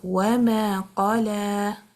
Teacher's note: The qaf is heavy because it has isti'ala. The lam is light because it has istifaal.